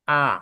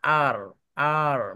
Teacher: ব্রিটিশরা হচ্ছে আ শুধু স্বর আ